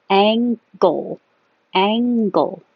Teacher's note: you have NG so the back of the tongue goes very high Ang and then you pull it down and make a go